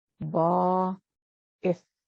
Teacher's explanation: It's got that glottal stop, the ith, which is written as an apostrophe in the transliteration.